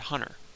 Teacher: there's no T at all in that word